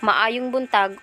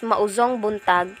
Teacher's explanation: Porohanon is distinguished from the means by which the locals substitute J sounds with Z. For instance, Cebuano, maayong buntag, or it means good morning, vocalized as mauzong buntag in Porohanon.